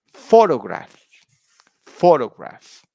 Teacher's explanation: on the first word yeah the word stress is on the first syllable